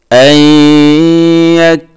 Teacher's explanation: এই নুনকে ইয়ার সাথে মিলিয়ে দিয়া গুন্না করব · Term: ইদগামে মাল গুন্না